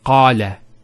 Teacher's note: Notice the elongation of the A sound. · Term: long vowels